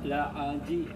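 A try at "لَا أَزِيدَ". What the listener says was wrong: Jangan ke ain. Bukan la. La a. La azida. Zi.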